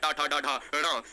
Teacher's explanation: ये मूर्धन्य स्पर्श व्यंजन है